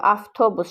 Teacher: Gördük ki, V, F-ya keçir.